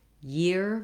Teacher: you don't leave off the glide at the beginning and that you have a nice tense ear sound so it's just like the word ear with a gliding yeah